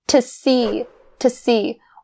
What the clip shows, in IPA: tə -siː